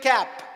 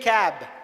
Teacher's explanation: Cap is ending in P sound. P is unvoiced consonant. Cab is ending in B sound. B is voiced consonant.